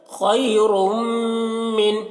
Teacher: رم، دو پیش نہیں، خیر، میم نون زیر من، خیر من، خا کو پر پڑھیں گے، را کو پر پڑھیں گے، میم مشدد غنہ کریں گے